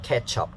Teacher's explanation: You see the ch sound in the word ketchup. The ch sound is unvoiced.